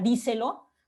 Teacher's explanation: La sílaba se y lo se apoyan en la sílaba tónica di, ¿no? Dándole mayor relevancia, mayor entonación, mayor fuerza a esta sílaba en particular.